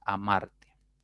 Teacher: la mayor fuerza estaría en la segunda sílaba contando de derecha a izquierda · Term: palabra grave